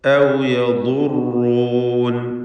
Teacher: ളാദ് റാ ഇവ രണ്ടും തഫ്ഖീം ചെയ്യുക, തടിപ്പിച്ച് ഉച്ചരിക്കുക. ളാദ് ഇസ്തിഅലാഇൻ്റെ അക്ഷരമാണ്.